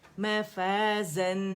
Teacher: اور نون پہ 1 کاؤنٹ سے زیادہ نہیں رکنا کیونکہ وہ سکون کے ساتھ ہے، مشدد نہیں ہے. ٹھیک ہے، معاشن جب نون کے مخرج پہ پورا جائیں گے نا خود ہی 1 کاؤنٹ ادا ہو جائے گا.